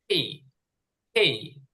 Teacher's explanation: একটু বাতাস বের হবে ট এবং ঠ এর মাঝখানে